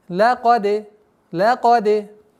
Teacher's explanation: Здесь применяем правило калькаля, но правило калькаля не влияет на твердость и не переводит мягкий звук даль в твердый звук.